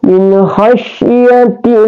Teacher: Di sini dia tarkik, dibaca tarkik. Allah itu dibaca tarkik atau dibaca tipis Jadi bacanya min khasyatillah, kita wakaf ya.